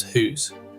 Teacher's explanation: the ow sound gets replaced with oo, so house becomes hoose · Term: vowel shifts